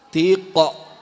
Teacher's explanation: Qalqalahnya kubro. Karena berada di akhir kata.